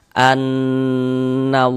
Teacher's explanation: Jadi bagian an-nya itu suaranya itu kita tahan ya, kita panjangkan sejenak. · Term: gunnah musyaddadah